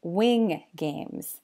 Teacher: an N sound at the end of a word, like win, changes to an ng sound, like wing, when the following word starts with a K or a G sound, like games. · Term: assimilation